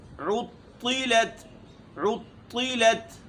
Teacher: عین کے اوپر پیش ہے اور طا کو موٹی پڑھیں گے